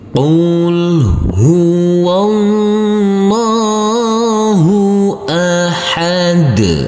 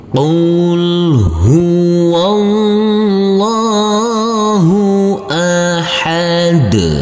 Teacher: Jangan lupa untuk huruf dal nanti kita pantulkan karena ini adalah bacaan qalqalah.